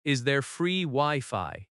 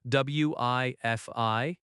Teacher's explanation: Wi-Fi has stress on both syllables.